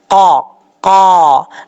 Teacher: میری زبان کی جو جڑ ہے وہ اوپر والے تالو کے نرم حصے سے لگ رہی ہے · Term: قاف